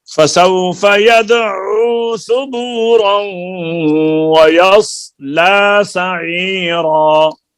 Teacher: सबूरन को जब वाव से मिलाएंगे तो यहाँ पर गुन्ना होगा।